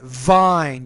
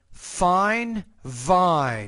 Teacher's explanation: You got to vibrate your lips a little bit more.